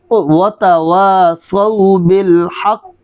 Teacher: حق موٹے کاف، جو کینچی والا کاف نہیں ہوتا موٹا کاف